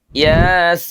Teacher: Seharusnya ya dibaca panjang dua harakat dan sin dibaca panjang enam harakat.